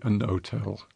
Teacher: some rather conservative speakers in Britain might say a no-tel and drop the H